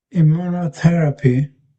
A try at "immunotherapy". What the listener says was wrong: Yes. Yeah, that's it. Yeah, that's it. Yeah, you'll get it.